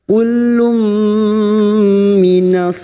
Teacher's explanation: Kullum duma tanwin bertemu mim idgham bi gunnah, masuk pada huruf mim, masuk dengan mendengung. Kullum mendengung selama 3 harokat